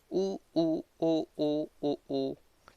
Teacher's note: अपने जो होठों की आकृति होती है वो गोल हो जाती है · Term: वृत्ताकार